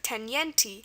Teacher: an I followed by another vowel sound usually sounds like there's a Y sound